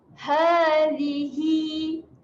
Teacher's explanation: Jadi bacaan ha dibaca sebanyak 2 harakat.